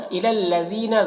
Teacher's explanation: ذال کو باریک پڑھنا ہے اور یہاں پر یا مدہ ہے، ایک الف کے برابر کھینچیں گے